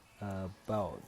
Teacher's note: About itu yang stresnya terdapat pada silaba kedua.